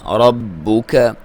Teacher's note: را کو موٹا پڑھیں گے کیونکہ اس کے اوپر زبر ہے، با کو دبا کے پڑھیں گے، لیکن کاف کو بھی اور با کو بھی باریک پڑھیں گے۔